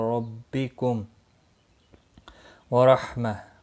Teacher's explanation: را زبر کی وجہ سے پر پڑھا جائے گا